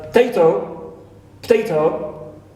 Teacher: So instead of saying potato, we omit the schwa in the first syllable. Right. Because it occurs between pa and ta.